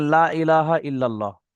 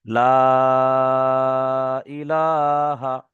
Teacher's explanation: লা বলে এখানে একটা টান রয়েছে। যে এটি হচ্ছে মাদ্দে মুনফাসিলের একটা কায়দা। এখানে এক থেকে তিন আলিফ বা কোন কায়দায় চার আলিফও বলা হয়।